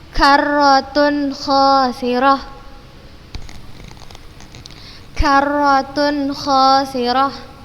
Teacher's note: tanwin bertemu dengan huruf kha, maka kita bacanya jelas. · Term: izhar halqi